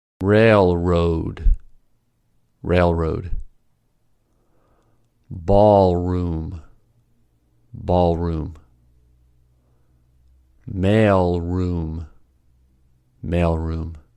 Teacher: Let's start with the LR combination where L is followed by R. The movement is tongue tip up for L release and pull into a bunched R.